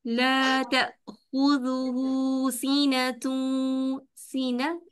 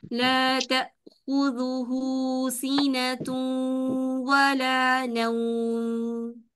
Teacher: ता के ऊपर जबर नहीं पेश है, इसलिए पेश के लिए होठों का मुकम्मल गोल होना बहुत ज़रूरी है।